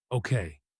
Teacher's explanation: This is a beautiful example of supportive intonation. Okay, falls calmly almost like steadying ground beneath shaky feet. · Let's think about this together carries warm even stress across several words, especially together, which gets a small lift and stretch